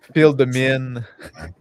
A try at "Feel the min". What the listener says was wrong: But when you say it sounds like you're saying feel the men. That is what you said.